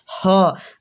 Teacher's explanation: ह जहाँ क हो रहा है वहीं से ह हो रहा है, अर्थात इसका भी उच्चारण कंठ से हो रहा है, अर्थात ऑप्शन सी आपका सही होगा, कंठ।